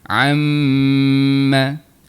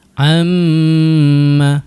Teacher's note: Untuk bunyi dengung, dengung untuk huruf mim dan huruf nun yang bersabdu, dia keluarnya di bahagian rongga hidung kita.